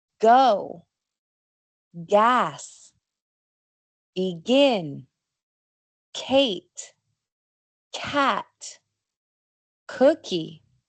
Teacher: Se producen subiendo la base de la lengua hacia arriba en la garganta. Son casi iguales que los sonidos del español, solamente con más aire.